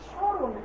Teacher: স্মরণ উচ্চারণ আমরা করলাম ঠিকই, কিন্তু সেখানে আমরা কোনো মফলার উচ্চারণ করি নি। এজন্য স্মরণটা আমাদেরকে তালব্য ছয় চন্দ্রবিন্দু লয়কার দন্ত ন আমাদেরকে দিতে হবে। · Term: মফলার কোনো উচ্চারণ হয় না